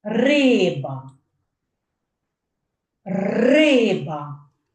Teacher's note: перший склад я вимовляю голосніше той на цей перший склад падає наголос · Ви чуєте що я перший склад вимовляю голосніше